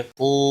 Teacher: قو واو مدہ ہے، 1 الف کے برابر کھینچ کر پڑھیں گے۔ قاف حروف مستعلیہ میں سے ہے، پور پڑھیں گے۔